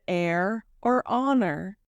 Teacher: Not always, for they should not always be aspirated. In the word hour, the h is not aspirated, nor in the word heir or honor.